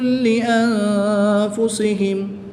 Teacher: نون ساکن کے بعد حرف فا حروف اخفا میں سے ہے تو یہاں پر اخفا ہوگا یعنی غنہ زمانی کر کے پڑھیں گے